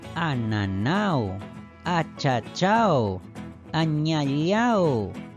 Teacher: Aunque cada una tiene un significado distinto, todas llevan la mayor fuerza de voz en su última sílaba.